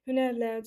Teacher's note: Hünərlə sözündə nərin üzərində vurğu olmuş olacaq.